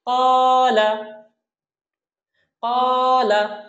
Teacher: ক্বালা কটা আমরা একটু হাই সাউন্ডে বলবো এবং কতে এক আলিফ টানবো কারণ জবরের পরে খালি আলিফ আসছে, লাতে কোনো টান নেই। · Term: আলিফ মাদ